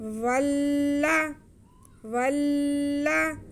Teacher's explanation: वाव को हम लाम के साथ मिलाएंगे और लाम पे फिर ज़बर पढ़ेंगे। वाव को थोड़ा रुक के लाम के साथ मिलाएंगे क्योंकि लाम मुशद्दद है